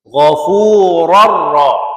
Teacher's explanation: tanwaai bertemu dengan ro ialah idgham bilaunah. Ha tu kita masukkan tanwain ke dalam ra dengan tiada dengung.